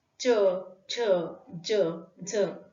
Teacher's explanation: तालूच्या पुढच्या भागामध्ये च, छ, ज, झ